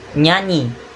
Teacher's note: bagian tengah lidah diangkat menyentuh atau mendekati langit-langit mulut yang keras atau mulut bagian tengah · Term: laminopalatal, bunyi laminopalatal